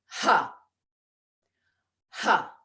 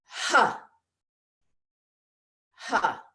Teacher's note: have that H sound, that aspirate sound, come from the lower abdomen